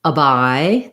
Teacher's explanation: the I diphthong gliding between the ah open and the reduced and laxed I